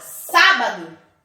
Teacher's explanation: porque a sílaba tônica está em antepenúltima posição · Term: proparoxítona